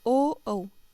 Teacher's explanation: ओ दौ तो है कंठोष्टम, अर्थात ओ औ, इन दोनों का उच्चारण स्थान कंठ और ओष्ठ दोनों है